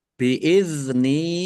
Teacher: dal sukun bukan qalqalah jangan dipantulkan.